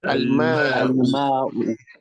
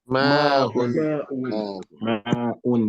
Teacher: al-ma'u is with one dhamma, no tenwin, no nasal sound? But ma'un has two dhammas at the end, and there's a nasal sound.